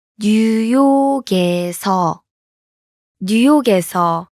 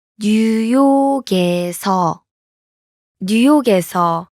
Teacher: Notice the difference? The last consonant in 뉴욕. blends with the vowel in. 에서.